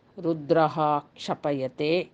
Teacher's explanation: ಅದು 24ನೆಯ ಶ್ಲೋಕದಲ್ಲಿ ನಾವು ಕಾಣುವಂತಹ ಪದಗಳು ರುದ್ರಃ ಕ್ಷಪಯತೆ. ವಿಸರ್ಗದ ಮುಂದೆ ಕ್ಷಕಾರವಿದೆ, ಹಾಗಾಗಿ ಯಾವ ಬದಲಾವಣೆಯೂ ಇಲ್ಲ.